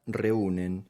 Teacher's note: Bien, yo sé que suena fuerte la U. Esta palabra reúnen se acentúa en la U. Por lo tanto, tenemos una vocal E, que es abierta, es fuerte, y una vocal U, que es cerrada, pero no es débil. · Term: hiato